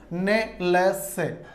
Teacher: इनका उच्चारण, वर्णों का उच्चारण करते समय जिह्वा की नोक ऊपर के दांत के मसूड़े का स्पर्श करती है, अतः दंत भाग का स्पर्श नहीं करती, इसलिए इन्हें वर्ष या मसूड़े से उत्पन्न वर्ण कहा जाता है।